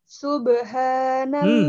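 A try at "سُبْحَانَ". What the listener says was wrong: Mana ada subha pakai ha.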